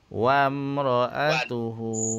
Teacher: wam tak dengung. Nah. Wam satu harakat.